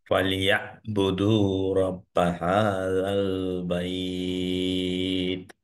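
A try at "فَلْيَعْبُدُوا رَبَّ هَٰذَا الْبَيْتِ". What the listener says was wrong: Good, মাশাল্লাহ, মোটামুটি good. এই আইনটা এখনো একটু প্রবলেম আছে, এই জুয়ের আইন, এই আইন, ঠিক আছে, ইনশাল্লাহ এটা নিয়ে আমরা করবো ইনশাল্লাহ, সমস্যা নেই।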